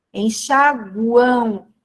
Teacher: A letra M aqui representa a semivogal U, tá? Por quê? O som final aqui é som de U. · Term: tritongo